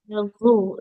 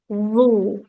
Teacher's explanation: Ada bunyi seperti perpaduan D dengan Z-nya ya.